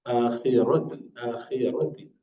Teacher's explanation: ra would be always pronounced with full mouth, rounded mouth. if it has fatha or dhamma.